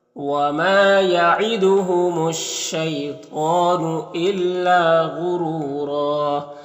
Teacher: الا میں الف مدہ ہے۔ غین حروف مستعلیہ میں سے پر پڑھیں گے، را کو اوپر پیش ہے، را کو پر پڑھیں گے، یہاں پر واو مدہ ہے، ایک الف برابر کھینچیں گے، یہاں پر 2 زبر ہے تو ایک زبر کے ساتھ الف پڑھیں گے اور را کو پر پڑھیں گے اس طرح سے۔